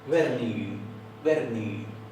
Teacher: En Hvernig, la G final se suaviza y a veces parece que no se oye.